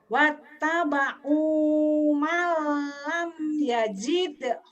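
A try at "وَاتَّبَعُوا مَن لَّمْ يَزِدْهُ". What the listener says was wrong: Wattaba'u malam, nggak ada yang panjang.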